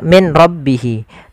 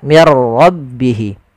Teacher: Min rbihi tapi diganti menjadi mirbihi Bagaimana langkah membacanya langkah pertama suara nunnya dimasukkan ke ro dan diganti menjadi R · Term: idgham bila ghunah